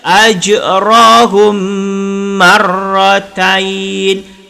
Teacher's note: Jadi apabila mim mati bertemu dengan mim, maka kena dengung dua harkat. Dengungnya dua harkat.